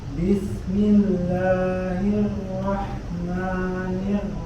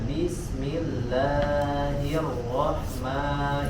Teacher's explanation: Mad tabi'inya, mad aslinya disempurnakan 2 harokat ya, tidak kelebihan ya, tidak lebih dari 2 harokat. Bismillahirrahmanirrahim ya, cukup sebentar madnya.